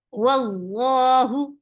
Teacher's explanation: Wow, the sound is of wow is short. Lafz jalala will be heavy because of the fatha.